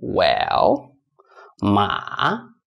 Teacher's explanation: Well, so this L, move that L here. It goes down and goes up again. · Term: third tone